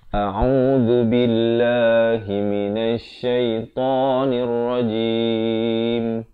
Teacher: Billah ini lafaz jalalah dibaca nipis 2 harakat dan ta 2 harakat, dan diwaqafkan jim itu sekurang-kurang 2 harakat. · A makhrajnya di pangkal kerongkong, au di pertengahan kerongkong, zu di hujung lidah.